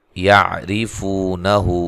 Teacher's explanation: یعرفونہ، را کو باریک پڑھنا، را کے نیچے زیر ہے۔